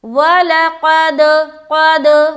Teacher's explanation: तो आवाज़ दाल से, जब काफ दाल से टच होगा तो फिर आवाज़ वापस लौटती हुई आएगी आपकी तरफ